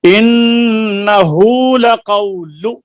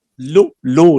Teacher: लक़ौलु की लाम की पेश को खींचना नहीं, इन्नहु लक़ौलु, लु लु नहीं, इन्नहु लक़ौलु रसूलिन करीम।